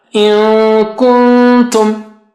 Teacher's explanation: First nun sakina will be close to kaf, second nun sakina will be close to ta. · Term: two ikhfas